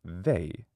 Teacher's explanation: because they is a diphthong. It starts with E, but it ends with I.